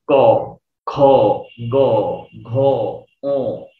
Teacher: বাতাসটা জিহ্বার একদম গোড়াতে, যেখানে আমাদের কণ্ঠ আছে ওই গোড়াতে আঘাত করছে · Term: কণ্ঠবর্ণ